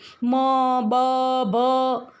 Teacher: તમે મ બોલો તો બંને હોઠને અડે છે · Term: ઓષ્ઠવ્ય